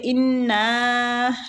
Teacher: نون مشدد پہ غنہ بھی کرنا ہے اور کھینچنا بھی ہے